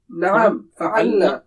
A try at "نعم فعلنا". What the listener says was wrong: کھینچنا نہیں ہے, فعلنا نہیں کہیں گے.